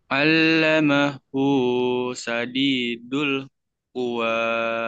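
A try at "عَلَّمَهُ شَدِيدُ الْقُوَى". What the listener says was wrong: Ka, jangan kuah tapi ya. Kalau kuah nanti kuah baso.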